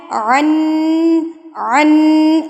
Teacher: نون مشدد کی آواز کو آپ نے ناک میں لے کر جانا ہے اور اس کو آپ نے ایک انگلی کھولنے میں جتنا ٹائم لگتا ہے یعنی کہ 1 سے 2 سیکنڈ کے لیے آپ نے اس کو ناک میں ٹھہرا کے رکھنا ہے. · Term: غنہ